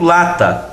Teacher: a forte é a palavra la como ela é a penúltima essa é uma palavra paroxítona